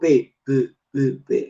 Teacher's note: Es bilabial por el punto, yo digo P, P, P, P. Los labios hacen contacto y se articula este fonema. Y es sorda porque las cuerdas vocales o bandas no van a vibrar.